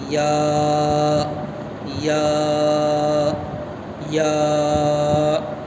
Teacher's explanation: یا کا مخرج جو ہے زبان کی بیچ اور اوپر کا تعلق، جہاں سے جیم شین نکلا تھا وہیں سے یا بھی نکلتا ہے.